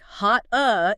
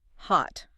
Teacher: your tongue moves into the T position. It touches that ridge behind your teeth, but the airflow is completely blocked. No puff of air escapes. The sound is just cut off abruptly. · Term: stopped T